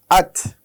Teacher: হামজা তা জবর আত বলার সময় একটু বাতাস ছাড়তে হবে, কারণ তায়ের একটি সিফাত হচ্ছে এর বাতাস ছাড়তে হয়